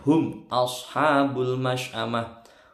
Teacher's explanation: Hum di sini bacaan idhar syafawi. Nggak boleh dengung kalau ketemu selain mim dan ba.